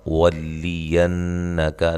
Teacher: نون مشدد پہ غنہ ضروری ہے، کاف کو باریک پڑھنا ہے